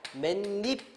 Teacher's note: 요게 니로 바뀌는 거니까 요거는 니은이 첨가되는 현상이죠. 니은 첨가.